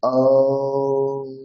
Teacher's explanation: তারপরে ম এর স্থান হচ্ছে আমরা জানি অষ্ট এবং নাসিকা তাহলে অষ্টের সাথে সাথে নাসিকা